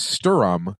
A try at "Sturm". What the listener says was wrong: Sturm. But it's one syllable.